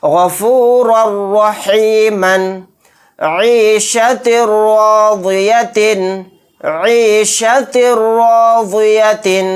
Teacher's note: را کے اوپر 2 زبر ہیں یعنی تنوین، تنوین کے بعد را آ گیا تو یہاں پر بھی غنہ نہیں ہوگا، یہاں پر ادغام بلا غنہ کا قاعدہ ہوگا۔